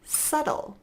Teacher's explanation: notice my lips don't close for the B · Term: silent B